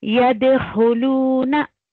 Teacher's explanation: यद होलूना दाल पे कलकला करेंगे